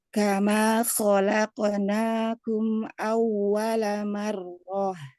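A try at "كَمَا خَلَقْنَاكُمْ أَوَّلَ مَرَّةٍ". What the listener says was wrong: Pantulannya dibikin ke ko, jangan ke ke.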